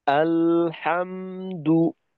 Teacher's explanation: লামে মিমে উভয়টাতেই জজম, সমান পরিমাণ সময় দাও, উভয়টাই তাওয়াসুদ।